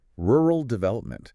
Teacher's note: immediately push the tip of your tongue forward to hit the ridge behind your teeth for the L sound